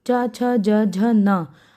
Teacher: जब हम इसको उच्चारित करेंगे तो जो हमारी जीवा है वो हमारे तालु से टकराती है